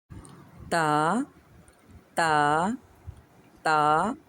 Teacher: ہماری جو زبان ہے اس کی نوک اوپر والے دانتوں کے ساتھ جڑ سے لگ رہی ہے